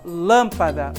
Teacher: Lan é a sílaba mais forte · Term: sílaba tônica